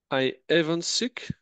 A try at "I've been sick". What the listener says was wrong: Pas even, non. Pas even. J'entends pas even. T'entends haven't think. Have been sick.